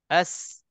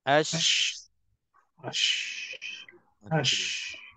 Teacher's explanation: Safir dia ada desiran, shin dia ada tafashi. Shin dia ada lebih sikit.